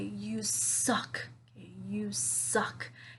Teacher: I'm saying this with that angry tone and I'm putting the stress on the word suck.